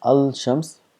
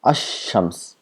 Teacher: So now if you add al to shams, so we don't pronounce as al shams, we make this lam silent and we give shadda to the word next to it, then becomes ash-shams, as though the lam does not exist.